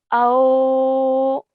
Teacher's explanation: start off with the sound of a and end with the waw sakin sound